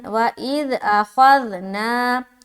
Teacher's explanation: خا جو ہے موٹے حروف میں سے ہے، اس لیے اسے موٹا ادا کرنا ہے۔